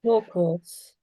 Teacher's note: when I'm saying turquoise, can you even hear the R sound? It's so dead. It's not really there